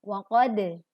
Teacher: waqad, pantulkan dal sukun dengan jelas.